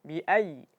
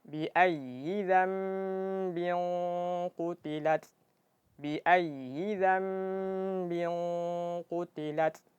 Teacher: Tapi jangan sampai ditekan sampai suara yang tertahan, karena huruf ya dia sifatnya sifat rakhawah, suara yang mengalir. Jadi ditekan bukan ditekan untuk menahan suara, tapi ditekan kadar suaranya.